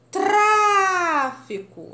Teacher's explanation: A sílaba mais forte é o tra.